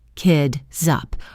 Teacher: The word kids ends with a voiced Z sound. This Z sound links directly to the vowel U in up. This creates a smooth connection that sounds like kid, zup.